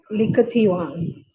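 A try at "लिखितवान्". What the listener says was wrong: Likhitavan. You have to say ikara. Likhitavan.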